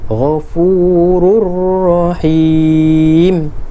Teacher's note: Dia tak bunyi Ghafurun Rahim, tak kena. Dia masuk terus dengan ra.